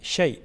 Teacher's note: یا لین کو ہم جلدی پڑھتے ہیں اور نرمی کے ساتھ ادا کرتے ہیں